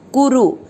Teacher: कुरु दोनों मात्रक छोटी है लंबा नहीं खींचना